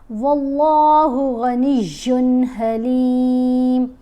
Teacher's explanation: تو اب تنوین کو ادا کرتے ہوئے غنہ نہیں کریں گے، غنی ایسے کر کے نہیں پڑھیں گے، تنوین کو جلدی ادا کریں گے۔ · اللہ کی لام کو موٹا پڑھیں گے اور غین کو بھی پر پڑھیں گے، موٹا پڑھیں گے۔